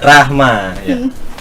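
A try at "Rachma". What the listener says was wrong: Salah. Itu kan ada CH-nya, Rahma gitu. Tuh, harus ada kolkolahnya.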